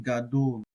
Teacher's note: this has like an O sound. Some people do more of a U sound. I try to go somewhere in between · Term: holam vowel